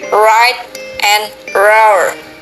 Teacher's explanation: Tongue raises to hard palate, but not too close, alveolar or post-alveolar. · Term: English approximants